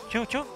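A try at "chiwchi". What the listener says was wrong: No, es chiuchi. Chiuchi, solamente la I.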